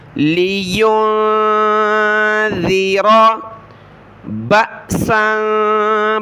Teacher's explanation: با کے بعد حمزہ جو ہے ساکن حمزہ ہے، حمزہ ساکنہ پر جھٹکا دینا ہوتا ہے۔